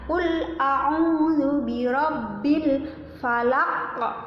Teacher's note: qaf yang di akhir ini namanya qalqalah. Cara pengucapannya harus dipantulkan ya.